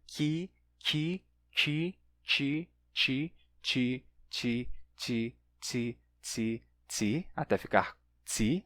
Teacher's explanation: o qui vai mudar porque o i é uma vogal palatal, né? A língua está aqui em cima, i, então vai puxar o som do k, do ki, para a ponta da língua. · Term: palatalização